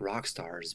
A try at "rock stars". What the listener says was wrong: Yeah, so I'm hearing rock stars, R's, instead of rock stars. So once again, I'm hearing rock stars instead of rock stars. I'm hearing R instead of R. It almost sounds like you're kind of trying too hard to make that sound there.